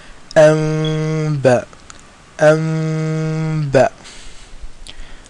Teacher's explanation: The difference between the Ikhfa and the ghunna is that in the Ikhfa, the tip of the tongue does not touch the top of the mouth. And also in this particular Ikhfa, the lips are brought very close, but they don't touch. They leave a slight little gap and the ulama of Tajweed say it's as if you're holding a seed between your lips.